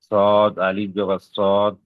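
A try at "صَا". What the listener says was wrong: সদ আলিফ জবর সদ, দদ আলিফ জবর দদ, এরকম নয়। সদ আলিফ জবর স, স, পুরোপুরি সদ উচ্চারণ হবে না, ওটা তো সদের উচ্চারণ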